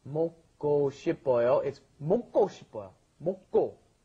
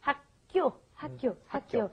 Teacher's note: when you got that K, the giuk, followed by another giuk, it ends up being a double giuk most of the time